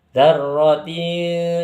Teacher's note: tidak dibaca izhar dan tidak pula dibaca idgham. Jadi samar-samar. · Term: ikhfa